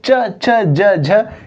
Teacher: जीव जो है तालू को टच करती है अर्थात इसका उच्चारण स्थान जो है वो क्या है तालव्य या